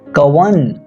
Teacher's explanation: हिंदी में इसी ऐ का उच्चारण अय और औ का उच्चारण अव के समान होता है